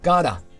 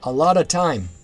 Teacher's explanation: the 't' sound frequently transforms into a 'd' sound in casual speech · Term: intervocalic t-flapping